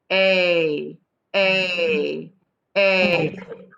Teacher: this a sound at the end of play is voiced meaning we use our vocal cords to make it so if you put your hands next to your vocal chords